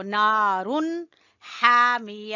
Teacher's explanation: ہا کو گلے کے درمیان سے ادا کریں گے